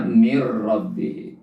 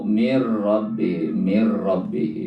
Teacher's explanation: Mir rabbihi nun ketemu ro itu namanya idgham bila gunnah. Nun mati bertemu ro ya, maka hukum bacanya adalah idgham bila gunnah, masuk tetapi tidak dibaca dengung.